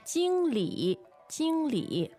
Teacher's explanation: First tone, third tone.